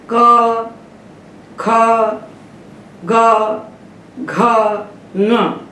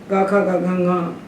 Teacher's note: क, ख, ग, घ, ङ, ये 5 व्यंजन कंठ से बोले जा रहे हैं, इसलिए इनका स्थान कंठ है। और कंठ स्थान होने का इनको कंठ्य कहते हैं।